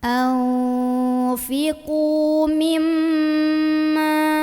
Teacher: Maka cara membunyikannya, qaf yang baris dhammah dipanjangkan sepanjang 2 harokat saja. Anfiqu mimma, mim ada gunnah musyaddadah karena ada mim yang bertasydid. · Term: mad tabi'i